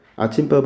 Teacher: 아침밥 할 때 첫 소리 비읍은 분명히 쌍비읍으로 바뀌었어요